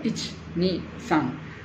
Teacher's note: la i finale si sente poco, si conta ich-ni-san, ma si scrive i-c-h-i, non posso scriverlo i-c-h, è sbagliato.